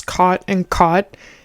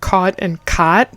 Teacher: I have the cot-caught merger, which means I pronounce the words cot and caught in the same way. It's hard for me to even pronounce them differently, but some people say cot and caught.